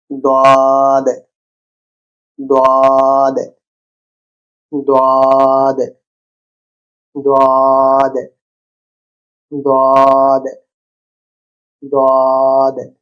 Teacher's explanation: দোয়াদ, গলার ভেতর থেকে মোটা দ।